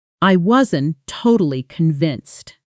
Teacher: The final T in wasn't almost disappears, absorbed into the next sound.